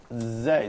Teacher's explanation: if you just say Zay, then you can find a kind of vibration